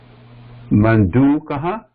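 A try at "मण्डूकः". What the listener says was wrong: Yeah.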